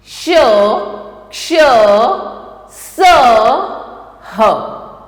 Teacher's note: जिन व्यंजनों का उच्चारण करते समय हवा मुंह से रगड़ खाने के कारण ऊष्मा उत्पन्न करती है उन्हें ऊष्म व्यंजन कहते हैं।